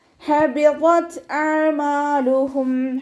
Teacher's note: ഹ എന്നുള്ള അക്ഷരത്തിൻ്റെ സൗണ്ടിനെ തൊണ്ടയുടെ മധ്യഭാഗത്തു നിന്ന് തന്നെ കൊണ്ടുവരിക. ഹ എന്നുള്ള അക്ഷരത്തിൻ്റെ സൗണ്ടായി പോവാതെ നോക്കുക കേട്ടോ.